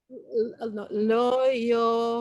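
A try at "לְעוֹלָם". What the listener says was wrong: No, I'm telling you, the first one is le. Le.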